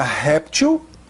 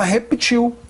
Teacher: Eu posso falar réptil, paroxítona terminada em L com acento, ou posso falar reptil, oxítona terminada em L, não tem acento.